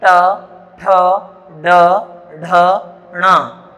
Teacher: इनका उच्चारण जब हम करते हैं तो हमारी जिह्वा पीछे की ओर मुड़ती है और वापस से आगे की ओर गिरती है। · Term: मूर्धन्य व्यंजन